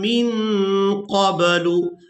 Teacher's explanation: نون ساکن پر اخفا کریں گے